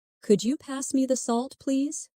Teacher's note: Listen to the way my voice rises on could you and falls gently at the end.